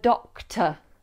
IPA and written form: ˈdɒktə (doctor)